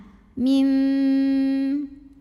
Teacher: bunyi nun sukun diganti dengan bunyi mim sukun. Jadi tadinya min jadi mim dan dengungkan. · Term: iqlab